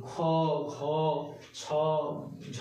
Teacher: এই ধ্বনিগুলি উচ্চারণের সময় কি হয়, প্রচুর শ্বাসবায়ু লাগে। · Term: মহাপ্রাণ